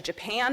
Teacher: because Japan has stress on the final syllable